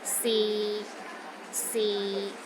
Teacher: the sixth tone is low and steady, but not as low as the fourth tone